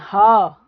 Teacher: इन्हें बोलते हुए मुख से कंपन नहीं होता। लेकिन हां जब हम बोलते हैं ह तो स्वर तंत्रियों में क्या होता है? कंपन होता है। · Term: सघोष